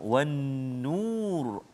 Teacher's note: Wajibul gunnah, nun musyaddadah. So dengung dua harakat.